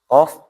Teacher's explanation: Pangkal lidah, ya kan? Pangkal lidah atau dekat sama tenggorokan paling atas. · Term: makhrajnya qaf